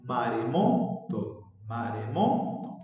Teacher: Pero nosotros estamos buscando las sílabas átonas. Si el acento se encuentra en la sílaba mo, quiere decir que las otras sílabas se pronuncian con menos intensidad, con menos fuerza